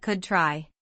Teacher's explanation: Could try links the D to T.